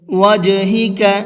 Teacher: اس جیم کے اندر بھی قلقلہ کریں گے، اس لیے کہ جیم بھی حروف قلقلہ میں سے ہے